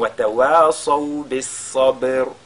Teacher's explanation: le ba qui suit qui est sakina, on fait donc al-qalqala sur ce ba. Parce que ba c'est une lettre de al-qalqala.